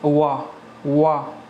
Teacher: इनको बोलने में क्या होता है कि होंठ दांतों को स्पर्श करते हैं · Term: दंत्योष्ठ व्यंजन